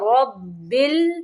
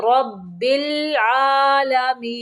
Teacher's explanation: رب، را کو موٹا پڑھیں گے، با مشدد ہے، رب بل نہیں پڑھیں گے، رب العالمین